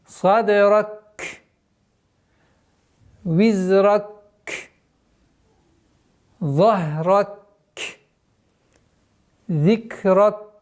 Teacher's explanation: При остановке на первом, втором, третьем и четвертых аятах, при остановке каф, вот звуки каф, полноценное произношение дуновения воздуха должно оставаться